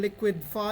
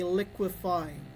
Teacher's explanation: There's a sound that was removed, which is the d. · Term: elision